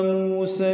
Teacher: مو و مد ہے، 2 حرکات لمبا ہے